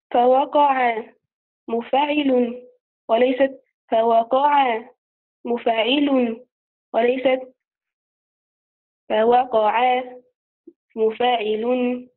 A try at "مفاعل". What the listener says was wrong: خطأ، أنت تقولين مفاعل فتنبرين على الفاء ونحن